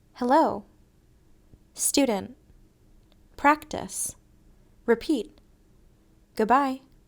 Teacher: It sounds like a quick uh. It's an unclear sound, almost not a sound. This unclear sound is in the short, unaccented syllables. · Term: schwa